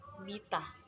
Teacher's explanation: Bunyi fukoid I, ciri-cirinya tinggi depan, tak bulat.